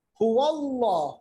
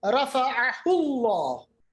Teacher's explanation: लफ्ज़ अल्लाह या अल्लाहुम्मा के लाम से पहले अगर ज़बर या पेश हो, बहुत आसान है याद रखना, तो उस लाम को मोटा पढ़ा जाएगा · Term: लामी जलाला